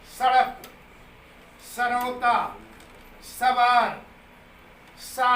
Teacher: सा सीधे दांतों से नीचे वायु निकल रही है।